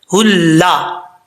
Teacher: اس کا تعلق جو حلق سینے کے ساتھ ہے اس کے ساتھ ہے، اس لیے اس کو بھاری ساؤنڈ کے ساتھ پڑھیں گے. ہا کو جب لام سے ملائیں گے تو بیچ میں جو الف ہے یہ گر جائے گا. لام کے اوپر شد ہے.